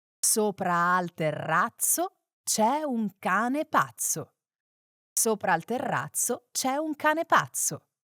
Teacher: Here's another chance to nail those double consonants, particularly the intriguing double Z sound, which is pronounced sharp and snappy like tss